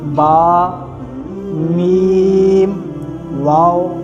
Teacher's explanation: با جو ہے یہ ادا ہوتا ہے ہونٹوں کی تری سے، اور میم خشکی سے، اور واو دونوں ہونٹ گول کرنے سے ادا ہوتے ہیں، جیسے با، میم، واو، اس طرح یہ ادا ہوتے ہیں۔